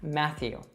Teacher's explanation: So it has two T's, but we only pronounce a TH sound there.